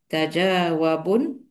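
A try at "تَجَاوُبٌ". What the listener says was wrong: Tajawu. Tajawu. Wu-nya doma.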